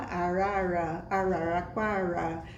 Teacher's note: esse R tá no início da sílaba é também falada com R retroflexo